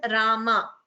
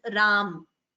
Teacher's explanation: we pronounce it as Rama, not as Ram. That is a huge difference between Hindi and Sanskritam pronunciation.